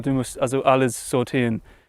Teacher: swallows the e in verb endings, which sounds very natural.